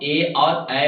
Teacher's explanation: ए और ऐ, कांठ और तालु से दोनों से बोलते हैं। कांठ प्लस तालु मिलकर उच्चारण होता है ए और ऐ का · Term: कांठ तालु